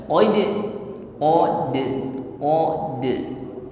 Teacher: tekanan hurufnya o ti u ya Q OD bukan odod berikutnya Dal sukun pantulkan ada sifat qqolah · Berikutnya dal sukun pantulkan. Ada sifat qalqalah, tepatnya qalqalah surah. Qalqalah yang letaknya di tengah kalimat.